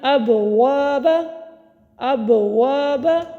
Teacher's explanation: با ساکن کلمے کے درمیان میں آیا، کلکلہ کیا اور ساتھ ہی ہم نے اگلا حرف ادا کر دیا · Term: کلکلہ صغریٰ